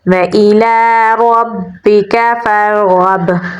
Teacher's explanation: با پہ ہم قلقلہ کریں گے، یہاں پر سٹرونگ قلقلہ ہوگا · را کو پر یعنی موٹا پڑھیں گے کیونکہ اس کے پچھلے حرف پر زبر ہے